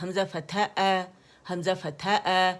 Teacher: فَأَنْتَ فَأَنْتَ. اچھا حمزہ جو ہے یہ آپ نے الجوف سے ادا نہیں کرنا, یہ کرنا ہے آپ لوگ نے اقص الحلق سے, ٹھیک ہے. کی ساؤنڈ آنی چاہیے, حمزہ فتح حمزہ فتح اور جو لوگ ادا کرتے ہیں وہ کون سی ساؤنڈ ہوتی ہے, یہ الجوف ہے, تو یہ کیا ہے, یہ مد کی ساؤنڈ ہے, ٹھیک ہے.